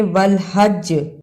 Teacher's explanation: والحج رکنے کی صورت میں والحج جیم پہ قلقلہ کرنا ہے